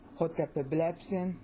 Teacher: See, stress is on blep, not on epe. The stress is not there.